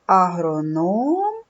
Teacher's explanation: в слові Агроном три голосних звуки Отже три склади а Ром наголос падає на третій склад це агроном в слові Агроном три склади 7 букв 7 звуків